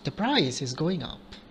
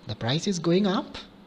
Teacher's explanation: tone or normally a rising tone is used with questions simply by changing the tone from falling to rising the possibility of changing a statement to question is created